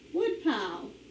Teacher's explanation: put our accent on the first syllable